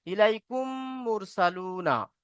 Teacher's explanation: মিম সাকিনের পরে মিম এসেছে মিমকে মিমের সাথে মিলিয়ে এক আলিফ পরিমাণ গুন্না করে পড়তে হবে